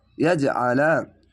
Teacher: কলকলাটি ধাক্কা মেরে নিচে সাউন্ড আসবে